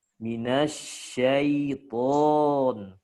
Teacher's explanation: Tebal, maksimal. Huruf to ini huruf paling kuat. Ditambah setelah to ada huruf alifnya.